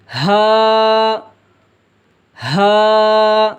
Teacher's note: ہا ہا، یہ سینے کی طرف سے آواز نکلے گی